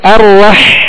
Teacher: ہا کو وسط حلق سے ادا کریں گے